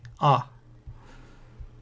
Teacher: A bit of a H you could pronounce, aspirate it, or you could make it silent. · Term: Qamats, He